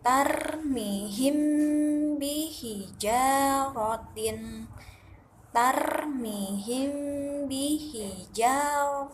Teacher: cara mengeluarkan Irama dengungnya hukumnya dari ikhfa syafawi yaitu dengan cara menahan huruf mim secara samar-samar sehingga ketika akan bertemu dengan huruf ba maka bibir atas dan bibir bawah dalam posisi tertutup · mim dan ba adalah pertemuan bibir bawah dan bibir atas nah hukum Ikhfa Syafawi ini tetaplah wajib dibaca dengung sekitar dua sampai tiga harokat